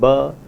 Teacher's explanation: the voiced bilabial plosive ba